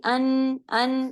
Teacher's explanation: ऊपर मसूड़े हैं उसमें जब जुबान की नोक हमारी लगती है तो नून की साउंड अदा हो जाती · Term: नून का मखर